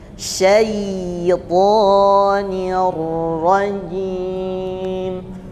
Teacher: antara sin fathah dengan ya sukun itu disebut dengan lin atau mengalir. Ada ayunan sekali ya. Jadi diayun sekali ke i.